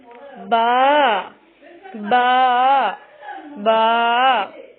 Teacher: با کی ادائیگی میں ہونٹوں کے گیلے حصے کو سختی سے ملا کر باریک آواز میں پڑھیں۔